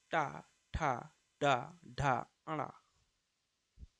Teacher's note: उच्चारण की दृष्टि से ट जो है दंत नहीं है। यह मूर्धन्य है।